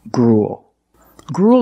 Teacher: the uel making the long u sound followed by a dark L just like in the words pool and cool